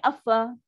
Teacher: Kalau bunyi affa maksudnya nun tu dah masuk kat fa terus dah. Nun tu automatik masuk dah. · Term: idgham